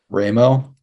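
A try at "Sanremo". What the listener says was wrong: It is pronounced saying Remo, not Rammo.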